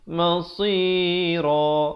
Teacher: Ran bila kita waqaf jadi ra.